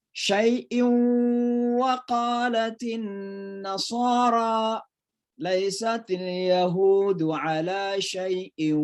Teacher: Jadi suara n masuk ke waw. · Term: idgham bi gunnah